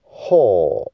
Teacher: 吼就是像华语的第四声，这样降下来，很快的高降声